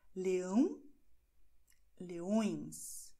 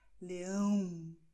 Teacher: Aber du musst einfach versuchen, dass diese Nasalisierung wie ein Muttersprachler macht. Das heißt, die Luft soll Richtung Nase gehen, wenn du Leão sagst.